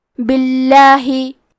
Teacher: کلمت باللہ حرف البا کے نیچے زیر ہے، لہذا لفظ الجلالہ کے لام کا حکم ہے ترقیق، تو ہم حرف اللام کو پتلی آواز میں پڑھیں گے